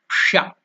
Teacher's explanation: The tongue is touching the roof of the mouth. That's called Murdhanya.